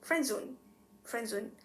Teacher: we just pronounce it as this friend zone friendzone as if the d is not there · in the word friend zone, the d sound, d, disappeared in the word friend. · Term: elision